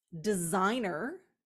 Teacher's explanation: the S has shifted to a Z sound